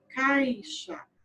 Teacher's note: Quase você não ouve, né, o som do I. Então, eu tenho uma vogal e uma semivogal na mesma sílaba. · a vogal que eu estou pronunciando com mais intensidade é o A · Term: ditongo